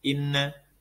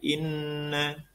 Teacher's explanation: Jadi didengungkan dan dua ketuk.